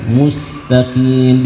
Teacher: jaga ketipisan dari huruf sin, bukan mustaqim tapi mustaqim, dijaga tipisnya, ya, bukan tapi mus.